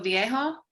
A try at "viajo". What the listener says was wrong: Viajo. Because if you say viejo, you're saying old. Viajo, viajas.